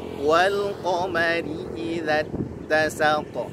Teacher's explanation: qaf tebal, mimnya tipis, ra-nya tipis